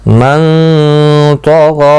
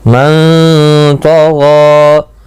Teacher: دیکھو غائن اور طا دونوں مستعلیہ ہیں, پر پڑے جائیں گے. غائن کو کھینچنا بھی ہے ایک الف کی مقدار کے برابر